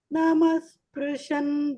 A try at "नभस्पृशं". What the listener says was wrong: Naba. Not Nama. Many of you chanted Nama.